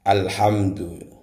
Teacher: Jadi alnya harus dibaca jelas karena ini adalah Al-Qamariyah. Alif lam al bertemu dengan huruf ha.